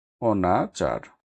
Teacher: শব্দের আদিতে না বোধক অ এর উচ্চারণ বিবৃত হয় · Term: বিবৃত উচ্চারণ